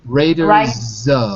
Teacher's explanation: But in Raiders, I don't hear the Z from you. I hear an S. I want to hear a Z.